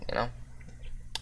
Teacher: Now we have the voiceless palatalized bilabial plosive consonant